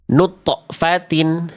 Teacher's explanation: Pantulan suaranya dipantulkan bagus. Tapi ujung pelafalan qalqolanya tertahan ya.